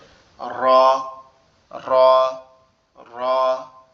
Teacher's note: আমাদের জিহ্বার আগার উল্টা পিঠ, উপরের তালুর সঙ্গে লাগবে, লেগে উচ্চারিত হবে